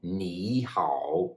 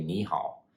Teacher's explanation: you just lightly touch the first character with the second tone so instead of saying nihal you just say Niha instead of